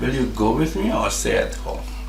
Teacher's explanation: the stress syllables are just go and stay. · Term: verbal questions with options